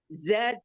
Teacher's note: Zainya ditampakkan sofirnya biar nggak kayak huruf jim.